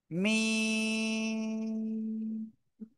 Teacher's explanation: দুই ঠোঁটের শুকনো জায়গা থেকে এই অক্ষরটা উচ্চারিত হবে। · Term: মিম